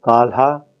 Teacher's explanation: have words such as kalha climbed which is uttered with the without any break between the lateral and the aspirate and in the word lha Village we have a clear break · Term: aspirated nasals and laterals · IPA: /kalʰa/